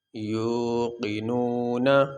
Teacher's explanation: اب یہاں آیت مکمل ہوگی، یہاں پہ ہم وقف کریں گے، سانس لیں گے، تو وقف کرنے کی صورت میں جو آخری حرف ہے نون، اس کے اوپر جو زبر ہے یہ نہیں پڑھی جائے گی، اس کو ہم ساکن پڑھیں گے۔ اگر اس آیت کو آگے والی آیت کے ساتھ ملا کے ایک ہی سانس میں پڑھنا چاہتے ہیں تو پھر یہ نون کا جو زبر ہے یہ پڑھیں گے، لیکن ہم یہاں وقف کریں گے، نون کو ساکن پڑھیں گے۔